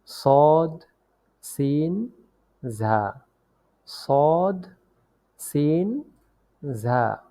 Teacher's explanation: জিহ্বার আগা সামনের নিচের দুই দাঁতের পেট ও আগার সঙ্গে লাগিয়ে উচ্চারিত হয় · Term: 12 নং মাখরাজ